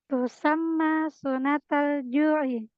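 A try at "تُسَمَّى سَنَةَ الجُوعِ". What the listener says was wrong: Sanatal. Kalau su nanti sunnatal itu jadi sunnah. Tapi kalau sana itu tahun. Sanat ju'i.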